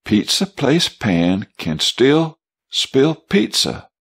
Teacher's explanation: you'll feel a puff of air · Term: plosive words